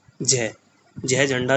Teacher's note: तालव्य जो तालु से टकरा रहा है वो आ रहा है जय।